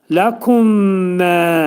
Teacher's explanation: Ləkummə demək mim hərfi mimə yetişir, idğam-ı mutəcəniseyn olunur. Yəni eyni hərflər bir-birinə yetişir və idğam mə'al-ğunnə olur. Yəni burunda sıxılacaq. 2 saniyə miqdarında sıxılıb və qaldırılacaq.